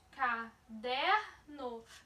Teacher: Veja que o der, a sílaba der, ela é pronunciada com mais intensidade.